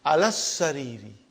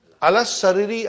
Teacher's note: I did not pronounce alif, I did not pronounce lam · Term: shadda